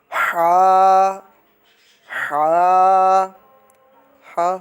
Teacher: حلق کے درمیان والے حصے سے ادا ہوتا ہے، یعنی middle part of the throat. حلق کے درمیان والے حصے سے ہا ادا ہوتا ہے۔